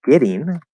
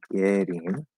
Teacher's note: very commonly, more often than not, we're actually going to say getting for the flap D